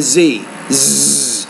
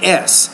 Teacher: The Z is more of a voice consonant. The S is a voiceless consonant.